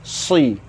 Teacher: Tengah lidah tu di langit. Si. Dia lekat di langit. Si. Dia macam tu, melengkung gitu.